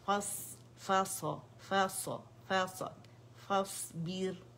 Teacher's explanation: فاس بیر را باریک کیونکہ اوریجنل کسرہ آ رہی ہے, ٹھیک ہے, فاس بیر با کو موٹا نہیں کریں گے.